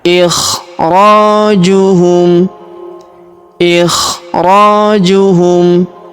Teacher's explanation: Huruf ro kita panjangkan dua harakat karena terdapat alif di depannya.